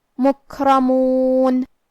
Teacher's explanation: کیونکہ را پہ زبر ہے، لہذا ہمیں را کو موٹی آواز میں پڑھنا ہے۔